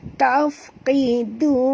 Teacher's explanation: Qi di sini tebal, du di sini lembut.